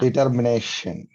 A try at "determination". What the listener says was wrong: Yeah, no problem with that one.